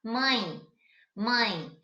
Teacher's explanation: esse E, ele não tem um som dele mesmo. Ele tem um som de I. Então, se ele tem um som de I e está acompanhado com A, ele vai formar um ditongo, que a gente vai ver mais lá na frente o que é.